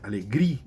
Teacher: Vocês repararam que a tonificação está na penúltima, alegria. Então, é uma grave terminada em vogal, não é isso? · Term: hiato